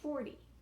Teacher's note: So the stress or the push in my voice is on that first syllable.